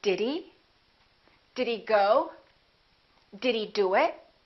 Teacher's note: when he comes later, when it's not in the beginning of the word, we generally reduce it. So we don't say did he, we very often say did he?